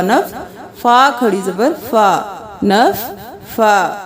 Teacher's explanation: فا کو دو بار کیونکہ تشدید ہے